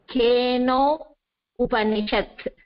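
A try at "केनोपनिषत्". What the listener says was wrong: இல்ல நீங்க சேர்த்தே படிங்க. கேனோபனிஷத் அப்படி படிங்க. இல்ல உபனிஷத் வரக்கூடாதுமா அங்க. அது அப்படி எழுதவே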